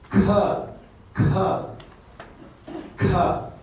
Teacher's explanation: If you put kha, you should feel the air coming out. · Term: aspiring